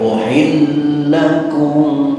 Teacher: Jadi lam dua ini diidghamkan mutamatsilain. Namun mutamatsilain kamil, bukan mutamatsilain shaghir.